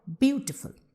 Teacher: So we are stressing on beautiful and we are pronouncing with the stress on the first syllable